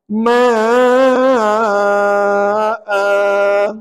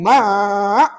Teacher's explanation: ketika wakaf kamu jadikan dia dua harakat.